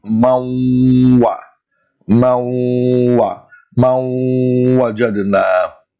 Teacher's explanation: we join the 2 words together and we stretch the joining sound approximately 2 times its original length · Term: with gunna